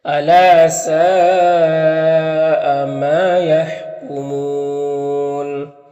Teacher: یہاں پر کمون میں واو مدہ ہے، تو وقف کریں گے تو مد عارض وقفی ہوگا